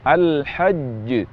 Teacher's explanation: huruf jim bertasydid sehingga ada jeda waktu untuk huruf jim yang pertama